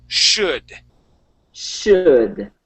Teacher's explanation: instead of a s sound, we want to say sh. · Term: sh sound